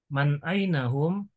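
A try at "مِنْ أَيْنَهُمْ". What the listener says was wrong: Min aina, jangan man, min ainahum.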